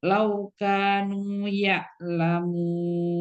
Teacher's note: Kafnya jangan panjang-panjang. Dua harakat.